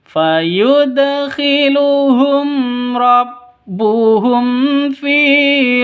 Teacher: mim mati bertemu dengan ro jelas terang karena izhar syafawi